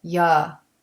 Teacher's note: And for reduction, the word you is not pronounced with a clear oo sound. We pronounce it ya.